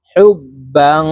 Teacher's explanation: হা বা পেশ হুব, বা আলিফ দুই জবর বাং, ইকফা গুন্না। তানউইনের পরে ইকফার হরফ জিম আসছে, এই কারণে এই বাকে নাকের ভিতরে লুকাইয়া গুন্নার সহিত পড়ব।